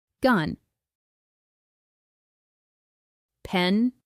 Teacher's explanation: When N is the final sound in English, the tip of your tongue touches just behind the upper gums. At the same time, the sound vibrates in your nose.